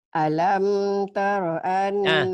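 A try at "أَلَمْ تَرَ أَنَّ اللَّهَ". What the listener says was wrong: Alamnya idhar maci. Jangan idhar, jangan alam. Alam taro. Idhar hukumi mati ya. Alam taro.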